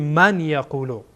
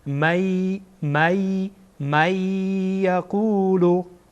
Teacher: یا از حروف ادغام هست، از حروف یرملون هست. اینجا اینها را با هم ادغام میکنیم